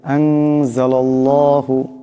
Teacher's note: আনজালাল্লাহু, এখানে আল্লাহ লামের ডাইনে জবর আছে, লামের উপর জবর আছে, আল্লাহ লামকে মোটা করিয়া পড়তে হবে